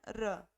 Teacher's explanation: र का जब उच्चारण करोगे तो जब मूर्धा से ये टच होती है तो हमारी जीवा क्या होती है, बेलन की तरह गोल हो जाती है। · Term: लुंठित व्यंजन